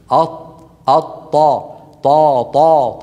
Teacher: الطاء العربيه تخرج من طرف اللسان واللحم الذي نبتت فيه الاسنان العليا اين اللحم الذي نبتت فيه الاسنان العليا من الداخل هذا اللحم